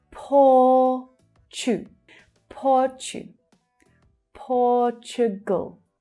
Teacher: So that's the /ɔː/ as in 'door' sound in the first and stressed syllable.